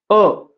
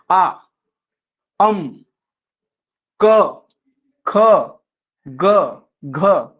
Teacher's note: कंठ म्हणजे कंठातून उच्चार होणार आहे